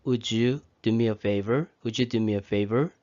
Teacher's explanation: D 발음이 U로 넘어가는 것이죠. 그래서 would you do me a favor, would you do me a favor 이런 식으로 연결이 되는 것입니다. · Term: 자음의 이동